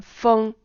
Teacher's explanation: 5 just means it's high. 5 to 5 means it stays high. 5 going to 5. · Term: first tone